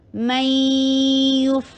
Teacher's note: یہ ادغام ہو رہا ہے بغنہ، تو اس کو آواز کو ناک میں ٹھہرائیے ، میوف، اور یا کے پر ضمہ، ہونٹوں کو گول کر